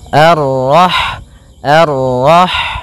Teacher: Kemudian pada lafal rah di sini ada huruf ha yang berharakat sukun, dan sifat ha itu yang paling mencolok adalah sifat hamesnya, yaitu mengalirnya nafas ketika kita membacanya